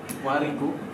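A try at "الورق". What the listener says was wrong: Iya, al-war, al-war, rohnya dipatahkan. Al-warik, kalau warik nanti beda dia kertasnya.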